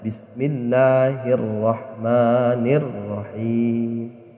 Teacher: alif lamnya itu diidghamkan atau dimasukkan ke huruf di depannya. Di cara membacanya, huruf sebelumnya hi dimasukkan ke huruf di depan alif lam itu, yaitu huruf ro. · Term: idgham syamsiyah